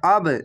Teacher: হামজা বাজবার আব, এখানে ধাক্কা মেরে কলকলা হবে